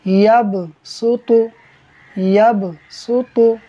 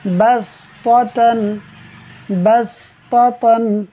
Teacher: اب ہم سین کو باریک کر کے پڑھ رہے ہیں لیکن اس کے ساتھ ہی تو بھی آ رہا ہے، تو کو ہم نے پر کر کے پڑھنا ہے، جس کی وجہ سے ہم سین کو بھی صاد کی طرف لے جاتے ہیں ہم سین کو بھی صاد پڑھ رہے ہوتے ہیں۔